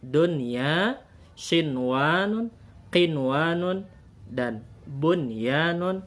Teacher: Ini dibaca jelas nun matinya dan disebut dengan ijhar mutlak.